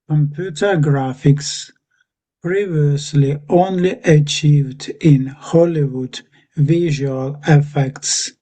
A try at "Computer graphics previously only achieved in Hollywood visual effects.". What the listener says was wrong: Yeah, that's spot on. That's very good. Very good. You really had the previous there.